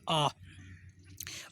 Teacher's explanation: आ का उच्चारण करते समय ये जो हमारा मुख है वो वृत्त आकार में नहीं बनता है, वृत्त आकार यानी गोल नहीं होता है, और आ है ये एक विवर्त मुखी है, या हम कह सकते हैं ये विवर्ती जो स्वर है, विवर्त स्वर है।